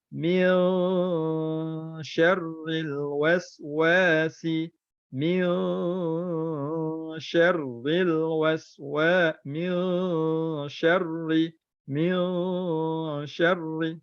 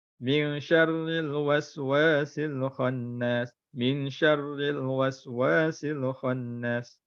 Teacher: Ikhfa hakiki ni kena dengung. Nun mati bertemu dengan shin kena dengung.